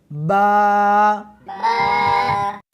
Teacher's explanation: اس حرف کو دونوں ہونٹوں کے ساتھ ملا کر پڑھیں گے